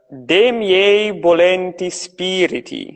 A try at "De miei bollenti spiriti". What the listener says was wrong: Yeah, that's it.